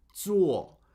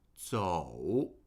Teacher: With zuo, we go from u to o, zuo. And with zhou, we go from o to u, zhou. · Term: diphthong